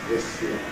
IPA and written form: ðɪs jɪə (this year)